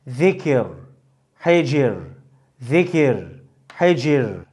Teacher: Terkik yapılır. Zikir, hecir, zikir, hecir gibi ra harfi ince okunur